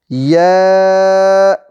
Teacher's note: زبان کا درمیان جب اوپر کے تالو سے لگے تو یا ادا ہوتا ہے